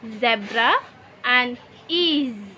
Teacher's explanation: Dalam suara z, sangat terlihat bahwa kita memiliki sedikit penutupan di antara gigi. Tetapi tidak sepenuhnya. Udara keluar dari sebuah lubang kecil di antara gigi dan kita dapat mendengar turbulensi udara tersebut.